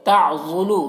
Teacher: ضاد حروف مستعلیہ میں سے ہے، اسے پر پڑھیں گے موٹا کر کے۔ لو یہاں پر واو مدہ ہے، 1 الف کے برابر کھینچ کر پڑھیں گے۔